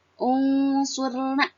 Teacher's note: Seperti dengan definisi tadi, agar mudah, kalau ikhfa itu berdengung, ya. Jadi nunnya itu diganti menjadi ang gitu, ya.